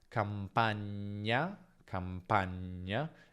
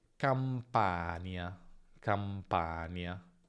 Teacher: Attenzione a non confonderla con nie, perché c'è differenza tra campagna, campagna e campania, campania. Nel secondo caso abbiamo una n normale più y